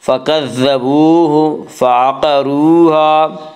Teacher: فعقروہا، قاف کو پر پڑھیں گے، قاف حروف مستعلیہ میں سے ہے۔ حروف مستعلیہ 7 ہیں جن کا مجموعہ خص ضغط قز، یعنی خاص ضاد غین طا قاف ذا، یہ حروف مستعلیہ ہیں اور یہ ہمیشہ ہر حال میں پر پڑھے جاتے ہیں۔